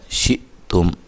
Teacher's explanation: حمزہ کو جھٹکے سے ادا کرنا ہے، تا کو باریک پڑھنا ہے، اور میم کو ہلانا نہیں ہے، قلقلہ نہیں کرنا